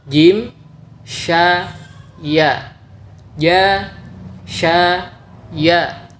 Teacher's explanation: Landasan atau tempat menempelnya hanya satu, yaitu tengah lidah dan langit-langit yang berada di atasnya.